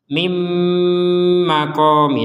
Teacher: Nun sukunnya masuk kepada mim sehingga dimasukkan dan didengung didengungkan